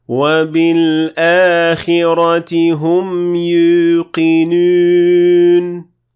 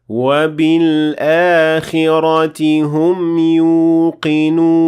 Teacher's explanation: you have to say oo without raising the middle of the tongue